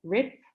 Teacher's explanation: the word has a final voiced consonant and a vowel is relatively long